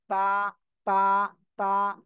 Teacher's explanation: জিহ্বার আগা সামনের উপরের দুই দাঁতের গোড়ার সাথে লাগিয়ে তা উচ্চারিত হয়।